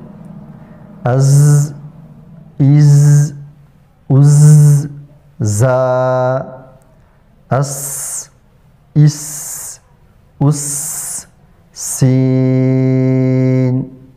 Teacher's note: زا اور سین میں صفت ترقیق پائی جاتی ہے، یعنی ان حروف کو ہم ہلکے پڑھیں گے۔